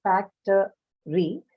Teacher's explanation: Okay, so it should be actually factory, but when in connected speech, as in when you speak, what happens, since this vowel after t is an unstressed schwa, it is not articulated well